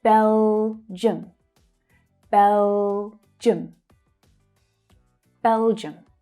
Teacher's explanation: Bel, bel is the strongest sound. And the I and the U create the unstressed vowel sound, the schwa, in the second syllable.